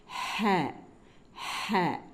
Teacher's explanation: நடு தொண்டையிலிருந்து வெற்றிடம் இருக்கு இல்லையா வாய் வழியா வெளியில வரும் அந்த பாம்பினுடைய ஒரு சத்தம் வரும் இல்லையா அந்த மாதிரி ஹ காத்து முதல்